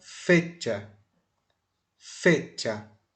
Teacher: Veja que não tem nenhum acento aí escrito, mas tem um acento na fala, porque eu vou botar força mais no fe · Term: acento prosódico